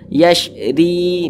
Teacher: baca kasrah huruf ro yang memiliki tanda baca kasrah ya itu dibaca tipis dibaca tarkik yasri tipis sehingga pangkal lidah kita itu tidak sampai terangkat ke atas tipis saja yasri begitu yasri nah kemudian RI dibaca panjang perhatikan